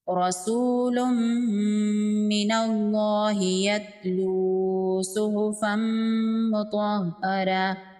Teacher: را پر زبر ہے، را کو پر پڑھیں گے۔